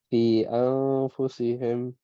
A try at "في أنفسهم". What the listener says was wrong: All right, make your ghunnas longer though. أنفسهم.